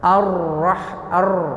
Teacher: Di antara sifatnya ra, cara mengucapkan huruf ra yang benar ada takrir, bergetar.